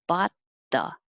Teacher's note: I'm not going to make a bot because the T and the TH are close, so I'm getting ready for the TH.